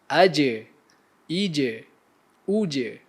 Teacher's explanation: huruf Jim terhasil dari tengah lidah bertemu dengan langit-langit bagian atas berkongsi makhraj dengan sini ya huruf nih disebut dengan jelas dan